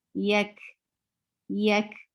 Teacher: Wa, yak, yeah, very soft sound, and kaf has hums. Hums is flow of breath.